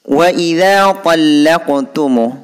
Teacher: Di sini ada qaf berharkat sukun. Ini hukum bacaan qalqalah surah. Cara membacanya dipantulkan. Bunyi la itu dipantulkan terhadap qaf.